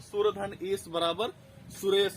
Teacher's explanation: आ से जब ई मिलेगा तो आ और ई मिलाकर ए हो जाएंगे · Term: गुण स्वर संधि